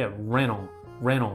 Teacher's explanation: ツッツッって発音しないで、レノン、レノンってこの▁t▁がドロップしちゃうという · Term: Tの省略